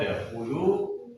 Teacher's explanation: Qalqalah sughra, yaitu karena huruf dal sukun bertemu di tengah kalimat. · karena lam dhamma bertemu dengan waw sukun, cara bacanya dipanjangkan 2 harakat. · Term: mat tabi'i